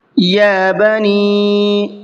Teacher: یا بنی، یہاں چھوٹا مد ہے، اس کو 1 سے 3 الف کی برابر کھینچ کر کے پڑھنا ہے۔ اس سے پہلے یا کے اوپر کھڑا زبر ہے، اس کو بھی کھینچ کر کے پڑھنا ہے۔